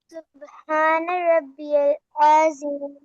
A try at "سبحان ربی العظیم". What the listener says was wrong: عظیم، نہیں اسٹریچ نہیں کرنا، عظیم. اچھا کو آپ لمبا کریں نا، آپ عظیم،